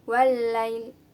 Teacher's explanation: Di ayat keempat ada hukum bacaan asyamsiyah, yaitu ada alif lam bertemu dengan lam. Jadi harus ditasydidkan atau dimasukkan cara bacanya.